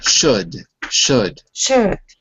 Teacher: Do you hear the L? No. Exactly. It's silent.